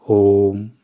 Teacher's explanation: प्लुत स्वर होते हैं। इसमें तीन मात्रा का समय लगता है। इन्हें त्रिमात्रिक स्वर भी कहा जाता है।